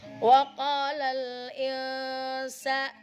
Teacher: Nun masuk ke huruf sin. Seperti halnya mobil yang mau masuk ke garasi. Nah, itu huruf ikhfa.